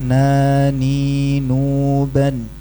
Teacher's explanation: E kalau nun bukan tepi lidah bagian depan tapi ujungnya. Benar-benar ujungnya masih nafal ke gusi di atas gigisan atas nauban.